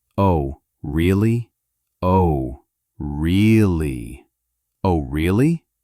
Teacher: With rising intonation. The intonation is important. You must go up at the end.